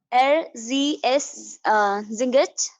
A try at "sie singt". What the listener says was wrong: No, why you are singet? You are saying why not singt?